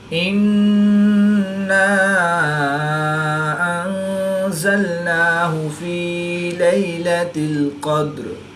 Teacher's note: نون مشدد میں ہمیشہ غنہ ہوتا ہے، تو یہاں پر ہم غنہ آنی کر کے پڑھیں گے